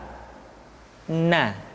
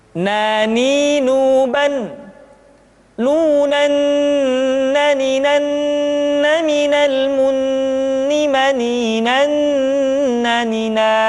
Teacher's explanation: Caranya menyentuhkan ujung lidah kita di antara posisi ro dengan la.